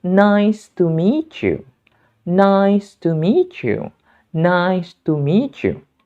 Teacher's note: Dalam expression atau ungkapan ini, kata meet berakhiran bunyi te. Sementara kata you berawalan bunyi ya. Sehingga kita perlu menggabungkannya menjadi bunyi ce. Sehingga pengucapan yang lebih tepat adalah nice to meet you.